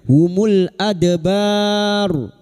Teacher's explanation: bertemunya mad dengan huruf idgham yang dibaca waqaf mad arid li sukun 4 harakat kita panjangkan. Dan huruf ro yang didahului fathah dan dibaca waqaf maka ro kita baca tafkim.